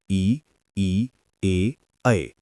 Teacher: अग्र स्वर जीभ का अगला भाग ऊपर नीचे उठता है।